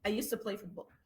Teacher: المفروض used to الصوت الاقوى صوت الدي، هو اللي سيطر صوت التي